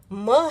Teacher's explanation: तो यह जो म है इसका उच्चारण स्थान जो है ओष्ठ भी है और नासिका भी है